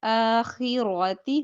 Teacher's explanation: रा जबर है तो मोटा होगा